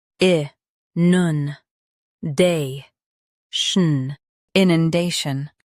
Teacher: Stress day. Keep nun soft, then shun quick.